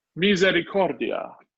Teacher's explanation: the stress is on core misericordia